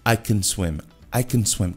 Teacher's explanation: Então, esse A aí no meio, ele se torna um schwa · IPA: /ə/